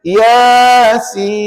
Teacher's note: Hujung lidah tu tekan pada gusi. Baru betul sebutan nun di hujung ejaan Yasin tadi.